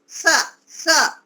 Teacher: दंती स इसलिए बोलते हैं कि हमारी दांतों से बोला जाता है वो दांत स स दांतों को टच करते हैं आपस में